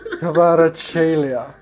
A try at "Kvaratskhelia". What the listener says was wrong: Kvaratskhelia. You're completely skipping all the L's in his name. Kvaratskhelia.